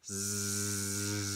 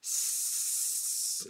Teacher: Now Z and S are very similar in almost every way. They differ only in the voicing. Z is voiced, Z.